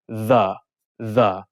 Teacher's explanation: so the is hard or voiced you hum the the